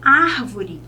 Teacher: a sílaba tônica é a antepenúltima, o Ar